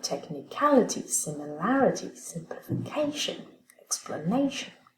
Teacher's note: Inspiration, simulation, donc C va garder, normalement il y a deux syllabes inaccentuées au début, donc on va prendre la première syllabe et on va la transformer en accent secondaire